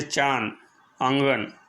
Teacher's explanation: अनुनासिक इसका उच्चारण नाक और गले दोनों से होता है